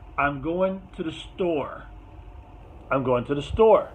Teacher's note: So in this case, store is the most important word in the sentence. So that's usually going to have a rise in intonation. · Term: focus word